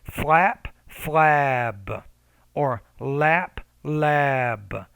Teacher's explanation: you want to make the vowel before it a little bit longer because it's a voiced consonant